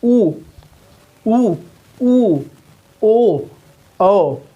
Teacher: ऊ, ओ ये बोलेंगे तो आपका होठ जो है कि गोला हो जाएगा।